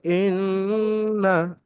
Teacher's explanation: নুনের উপর মুশাদ্দাদ, সেই জন্য গুণনা হবে কিন্তু টান হবে না।